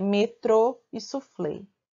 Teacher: a palavra cuja a última sílaba é a mais forte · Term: oxítonas